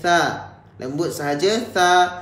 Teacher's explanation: bila kita sebut tha ini kita kena keluarkan lidah. Bacaan dia lembut sahaja. Okey, bacaan dia ringan sahaja. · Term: makhraj huruf tha